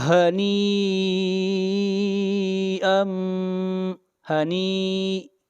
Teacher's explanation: آگے بڑھیے آیت نمبر 24، کولو، کولو واشربو، را کو موٹا پڑھیں گے، را کے اوپر زبر ہے، واشربو ہنیئا، ہنی، یہاں پر جو مد ہے یہ مد متصل ہے، اس لیے کہ حروف مدہ کے بعد حمزہ اسی کلمہ میں ہے، اس مد کو مد متصل کہتے ہیں اور اس کی مقدار 3 الف ہے